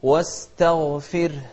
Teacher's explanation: الراء لأنها ساكنة وقبلها كسر، نرققها، نقول واستغفر.